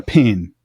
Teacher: a certain southern merger between pin and pen